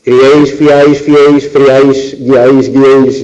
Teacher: la vocal tónica es la más abierta, medio abierta de las tres, y las que quedan a los lados son cerradas y entonces forman una única sílaba. Son monosílabos, no se puede decir que sean agudos y que acaben en ese, son monosílabos. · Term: tripongos